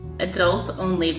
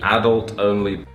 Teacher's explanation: The Americans put the stress on the second syllable and the English people put the stress on the first. · The thing these three words have in common is they all come from French, and there are a lot of other French words used in English which follow the same rule. Stress on the second syllable in America, stress on the first in England.